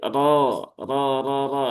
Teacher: Huruf ro berharokat fathah. Maka dia dibaca dengan tebal ya atau dengan tafkhim.